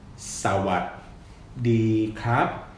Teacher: It's sawadee ka, low, mid, ka, high tone, which is actually high rising.